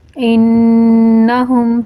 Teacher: انہم، نون مشدد ہے اور سورہ کلر بھی یہ نشاندہی کر رہا ہے کہ یہاں پر غنہ کریں گے۔